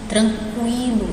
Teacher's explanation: Eu passo até mais tempo aqui no U